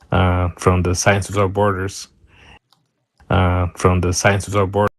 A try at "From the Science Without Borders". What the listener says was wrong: So a little bit of a stopping. The th is kind of turning into a d a little bit.